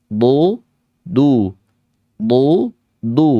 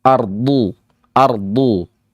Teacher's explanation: yang titik berat adalah sisi kanan dan Sisi kiri lidah yang depan Sisi depan memang menyentuh langit-langit mulut tapi tetap tidak